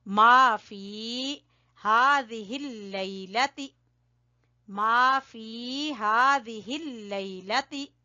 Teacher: यहां हम थोड़ा सा खींचेंगे या मद्दा की वजह से